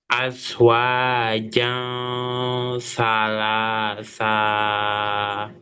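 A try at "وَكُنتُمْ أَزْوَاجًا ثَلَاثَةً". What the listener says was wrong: Kok panjang? Yang di ujung kok panjang?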